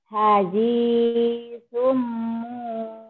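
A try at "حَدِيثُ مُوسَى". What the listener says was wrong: kenapa jadi hadisum ya ini kan enggak ada tanwin kalau ada tanin baru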